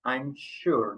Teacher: But here we don't have sh. But this s is pronounced like sh.